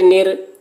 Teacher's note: را کے اوپر تشدید ہے، تشدید والے حرف کو 2 مرتبہ پڑھیں گے، ایک مرتبہ پیچھے والے حرف نون سے ملا کر اور ایک مرتبہ خود اسے